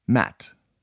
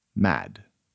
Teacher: Voiceless, short. Voiced, slightly longer.